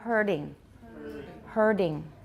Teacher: Sequences such as herding, in which the tongue is curled up and back after the R-colored vowel. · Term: retroflex flap